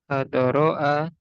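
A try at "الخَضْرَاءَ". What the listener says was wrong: Khodro ya, jadi bukan apa tadi, khadoro. Khodro, wazannya fa'la.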